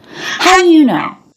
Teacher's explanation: So do and know said a little bit more quickly, but all of this really links together smoothly.